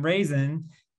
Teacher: You could argue that the I doesn't say anything, or that it says a sort of a schwa sound.